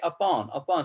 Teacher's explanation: the last part of the word upon is said with more force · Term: stressed syllables